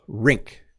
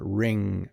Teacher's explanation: It's like the word hits a wall. Rink. Like it stops. Rink. Whereas ring, it just kind of, it's a little softer.